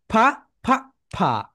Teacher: উপরের দাঁত নিচের ঠোঁটের সঙ্গে টাচ করবে